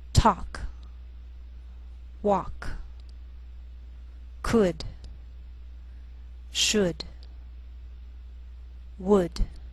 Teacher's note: sometimes L can be silent